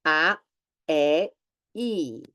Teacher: So the mouth gets closer, more closed, as you say these letters.